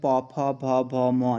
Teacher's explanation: जब आप इनको उच्चारण करोगे तो आपके ओंठ आपस में मिलेंगे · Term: प वर्ग